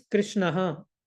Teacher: So the normal usage for the word Krishna is Krishnaha with visarga. But in Hare Krishna Mahamantra, there is no visarga.